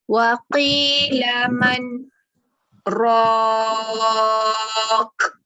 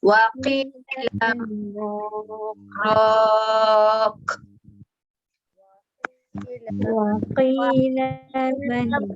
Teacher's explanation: baca senyap sekejap 2 jari tapi tak putus nafas. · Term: tanda saktah